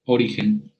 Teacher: la sílaba ri es donde cae la mayor intensidad acústica de la palabra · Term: sílaba tónica